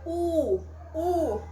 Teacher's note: a língua vai projetar para trás tá então é uma vogal chamada de posterior